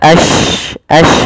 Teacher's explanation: menyebarnya suara shin di dalam mulut.